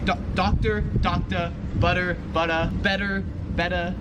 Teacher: Like any word that ends in like an IR, ER, AR, in Australia, just kind of how the accent is, they just say So like doctor, doctor, butter, butta, better, betta. The R is not really pronounced.